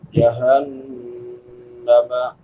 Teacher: جہنم، بڑی ہا ہے، حلق کے آخری حصے سے ادا ہوتی ہے، جس کو اقصی حلق کہتے ہیں، جو سینے کے ساتھ ملا ہوا ہے. · نون مشدد ہے، شد والے نون پہ ہمیشہ غنہ ہوتا ہے. غنہ آواز کو ناک میں چھپا کر ادا کرنا ایک الف کی مقدار کے برابر.